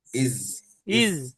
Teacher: জিভের আগা দিয়ে বের হচ্ছে কিনা, জিভের মাঝখান দিয়ে হবে না, জিভের মাঝখান হলে তখন জিম হয়ে যাবে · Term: জাল